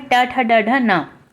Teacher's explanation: फिर आपका आता है ट वर्ग, इसे आप मूर्धा के नाम से जानते हैं या मूर्धन्य ध्वनि।